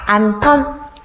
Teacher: 히읗과 뒤에 오는 디귿이 만나서 소리가 거세집니다. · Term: 거센 소리